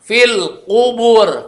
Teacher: Nggak boleh ada anginnya kalau qaf.